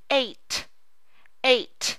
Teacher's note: Do you feel the puff of breath at T?